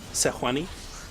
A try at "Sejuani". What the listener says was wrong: Yeah, man. The J is silent.